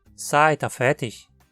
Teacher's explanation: Perceba como aqui o D não é pronunciado como um R porque, mesmo que pronunciemos um D só, há dois Ds aqui.